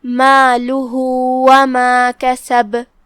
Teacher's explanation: آخر میں جو کہ ہا پہ علامہ ہے الٹا پیش، یہاں حکم ہے صلہ صغرا، مطلب ہم اپنی آواز 2 مد کے برابر لمبی کریں گے